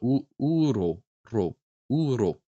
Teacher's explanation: I think I'm still rolling it, but I'm just doing it lightly enough that it's almost a tap.